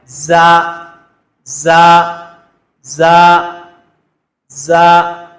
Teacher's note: ایک سیٹی کی آواز بھی پیدا ہونی چاہیے